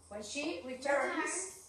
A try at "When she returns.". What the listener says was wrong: Que suenen las S, por favor.